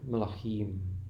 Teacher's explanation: the word became longer, the accent moved to the end, and therefore the vowels need to be shorter because the beginning is going to be pronounced quicker. · Here in Hebrew the vowels at the beginning are short and the ending will be accented.